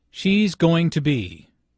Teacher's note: Instead of four syllables “go/ing/to/be” there are three syllables “ga/na/be.” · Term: gonna be